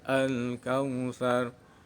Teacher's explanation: Hukum bacaan ro tebal atau tafkhim. Ada huruf ro dibaca mati didahului fathah. Cara membacanya ro dibaca tebal.